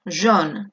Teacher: AU se va a pronunciar como una O, jaune. Si vosotros me pronunciáis jaune, es que en vez de haber una aquí una A, hay una E.